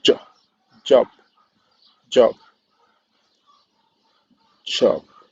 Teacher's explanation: It means that it's the combination of the two uh, constriction. First is a stop, and then concludes as a fricative. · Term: affricate